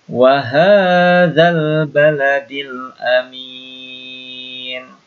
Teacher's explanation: Ulangi, hanya panjang. Ya, ini ada dua yang panjang, ha dan mi dibaca panjang, yang lainnya pendek.